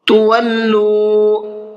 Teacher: تولوا یہاں پر لام کو کھینچ کر کے پڑھنا ہے، اس لیے کہ یہاں پر واو مدہ ہے